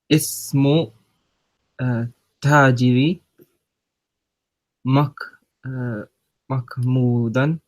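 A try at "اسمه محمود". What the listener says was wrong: There's no ka sound in the name. So it's after the meme, there's a ha. So Mahmudun. Mahmudun. I'm hearing you say like mach.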